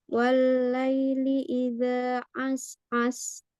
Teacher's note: mengambil makhraj tengah tenggorokan ya, supaya bunyinya berbeda dengan hamzah